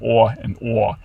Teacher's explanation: she's going to think that ah and or are different in her head but the way she actually says them that happens to be a merger